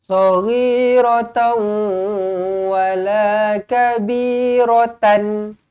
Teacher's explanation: Tanwin bertemu dengan waw, idgham ma'al ghunnah, didengungkan 2 harokat.